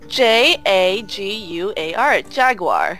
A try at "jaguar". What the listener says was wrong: No, Jaguar. There's no W. No, there's no W.